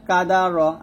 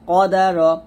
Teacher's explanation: কাফটা হবে কাদার, আর এটা হবে কদার, আকবার, আকবার। এখানে কাফটা হবে হামস, মানে এখানে বাতাস বের হবে কাফের ক্ষেত্রে, আর কফের ক্ষেত্রে কিন্তু বাতাস না, এটা হলো কলকলা হবে